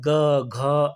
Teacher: सघोष यानी कंपन। दोस्तों गले में कंपन होता है यानी कौन-सी ध्वनियों को उच्चारण करने में जो गला मेरा होता है या आपका गला है उसमें कंपन देखने के लिए मिलता है।